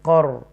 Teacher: یہ را ساکنہ کو تفخیم کے ساتھ پڑھیں گے